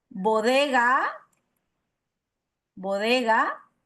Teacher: son todas las consonantes oclusivas sonoras